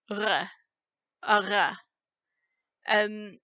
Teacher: So you end up with this sound r, a r, which is voiced. So if you can pronounce the sound loch, add voicing to it.